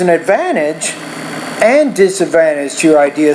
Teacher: So the tone needs to go up on advantage. It falls on disadvantage.